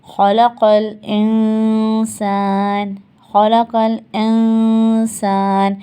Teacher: نون پہ ہم آئے، نون کو ہم نے چھپا لیا ناک میں، اور سین پہ ہم اپنا مخرج لے گئے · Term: اخفا